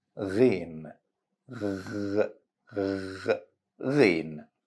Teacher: Try to feel this vibration to make sure you say it correctly. So it's a voiced sound because you should vibrate the vocal cords while saying it. Another way to practice this letter, you can gargle it.